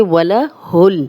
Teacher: वाव पे होंठ गोल होंगे